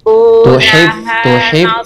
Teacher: H-nya juga di tengah-tenggerokan ibu.